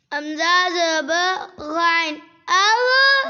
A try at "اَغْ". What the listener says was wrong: کلکلا نہیں کرنا, اغ نہیں کرتے, اغ. اغ, ایسے روک لو آواز. اغ اغ. اغ پہ آواز روک لو نا, سانس لے لو. اغ, ایسے روک لو آواز.